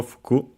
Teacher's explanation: fuku has accented on the last syllable, fuku. So yes, the fundamental meaning is clothes, especially Western clothes, because of course we have well, there are all the terms for Japanese clothes.